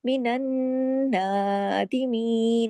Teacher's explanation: नून पे तशदीद है, डबल गुन्ना है। नून की आवाज में गुन्ने की आवाज होती है, नाक आवाज में छुपती जो है उसको गुन्ना कहते हैं। मिनन नादिमीन, ऊपर अलिफ खड़ी जबर है तो एक अलिफ के बराबर खींचा भी जाएगा।